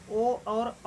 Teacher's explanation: कंठ ओष्ठ के अंतर्गत ओ और औ आता है